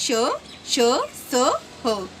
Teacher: उच्चारण में हवा की रगड़ खाने के कारण मुख से ऊष्मा निकलती है वे उष्म व्यंजन कहलाते हैं।